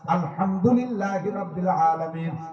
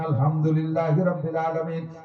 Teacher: দুইটা হার পার্থক্য আপনি শেখেন নাই চিকন আপনি মোটা করে বলছেন